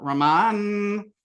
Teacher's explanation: you kind of get your na right in your dental